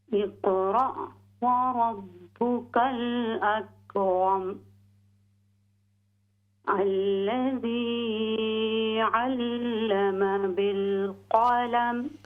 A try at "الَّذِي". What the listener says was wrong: यहाँ मद नहीं है, ज़्यादा लंबा न करें। अल्लज़ी अल्लम बिलक़लम,